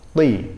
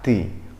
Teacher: Jadi ketebalan huruf to harus kita tonjolkan.